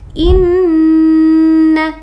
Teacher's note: disebut dengan Gun gunna Kenapa gunna karena dia Nun bertasydid jadi gunah itu syaratnya Nun dan mim bertasydid jadi harus dibaca dengung